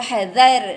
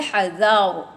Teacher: Ra yang tebal ya. Dha tidak tebal. Ra itu tebal ya.